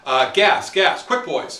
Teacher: He's one of the only poets who's ever gotten four stresses in a row, and he does it by creating four quick sentences.